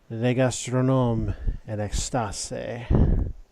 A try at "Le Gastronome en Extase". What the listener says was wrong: You wouldn't pronounce the final E, but other than that, your pronunciation was really good.